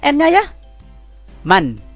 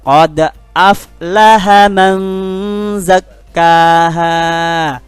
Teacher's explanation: Ketemu huruf za, maka bunyi n-nya sedikit ada rasa samarnya. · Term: ikhfa